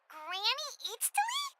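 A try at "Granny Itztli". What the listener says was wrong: Yes, Granny Eatstly. but emphasis on Eatsley, not Granny.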